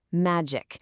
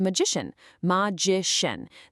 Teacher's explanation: The C- sound just melts away into a shh.